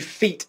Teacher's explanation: that e vowel sound in feet is a little bit shorter than it was when i said feed a moment ago there's a very important reason for that called pre-fortis clipping which